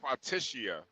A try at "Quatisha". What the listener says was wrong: No, there's an H. Quatisha.